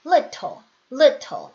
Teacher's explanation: 영국식 발음 같은 경우는 T를 이렇게 흘리지 않죠. 정확하게 소리를 내주는 편이에요.